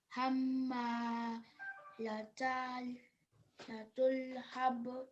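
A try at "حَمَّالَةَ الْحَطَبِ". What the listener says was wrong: It's again the fatha. So whenever we have fatha on top, we have to open our mouth when you're pronouncing it. So hammalatal hatab.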